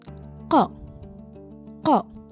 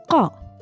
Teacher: The sound that comes out is more deeper, more resonant, more grounded than your K.